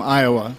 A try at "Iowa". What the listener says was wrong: I feel like you said too many syllables. I think it's like Iowa. Iowa.